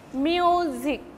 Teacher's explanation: Music, two syllabic words. The first syllable will be stressed and the second syllable will be unstressed.